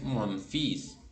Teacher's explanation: no se pronuncia la l Y en este caso sí se pronuncia la s final